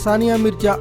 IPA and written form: saːˈnɪaː mɪrzaː (Sania Mirza)